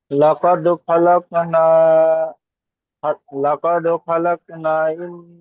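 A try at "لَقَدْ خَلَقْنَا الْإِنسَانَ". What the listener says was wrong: না, এই নুন আলিফটা টান হবে না, নুনটা গিয়ে ডাইরেক্ট লামের সাথে হবে, আর এই দুটো আলিফ বাড়তি করে হবে। লাকাদ খালাকনাল ইন নাল নাল, চলেন।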